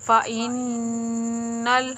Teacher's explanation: نون مشدد ہونے کی صورت میں اس کے اوپر غنہ کرتے ہیں، ایک انگلی کے مطلب ایک الف کے برابر